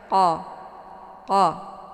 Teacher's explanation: bacaannya tebal ya Q ini letak posisinya di Pangkal lidah jadi saat melafazkan huruf q pangkal lidahnya terangkat menempel ke langit yang lunak